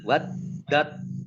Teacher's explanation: tasdidnya nah kemudian ini ta sukun bertemu dengan huruf th ya tak sukun bertemu dengan huruf tho ini langsung masuk ke huruf tho ya ini disebut am mutajanisain mutajanisin yaitu apa ketika dua huruf